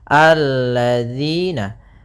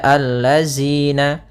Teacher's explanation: Kemudian pada lafal di sini hati-hati dalam pelafalan jangan dibaca allazina. Yang sering terjadi kesalahan adalah membacanya zal dengan zai